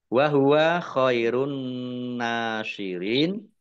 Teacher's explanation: Langsung masuk ke huruf berikutnya yaitu nun, ditandai nunnya ada tasdidnya. Nun tasdid dibaca hunah atau mendengung, ditahan 2 harokat.